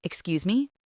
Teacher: You should have said, "Excuse me?" with your voice going up at the very end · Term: gentle rising intonation